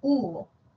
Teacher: la vocal u y la O esas vocales alta posterior y la media posterior · La vocal U también es alta, pero posterior.